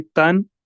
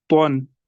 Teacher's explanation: यहाँ पर याद रखना है ता और तो, ये हरूफ करीब सऊद भी है आपस में, तो इनमें हमें डिफरेंशिएट करना है। ता को हम बारीक पढ़ेंगे और तो को पुर पढ़ेंगे।